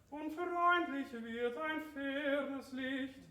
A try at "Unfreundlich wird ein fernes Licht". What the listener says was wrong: That's too much A. Now in between.